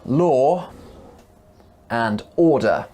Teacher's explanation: Join them together with the word and and you can hear another sound after the word law. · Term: intrusion